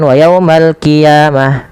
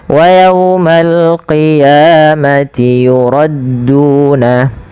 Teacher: Jangan wa yaumal qiyamah, nanti jadi huruf kaf. Dia adalah huruf qaf ya, lebih tebal hurufnya, dan dia sifatnya sifat isti'la, pangkal lidahnya terangkat.